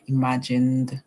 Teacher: The ED will say D, imagined. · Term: D sound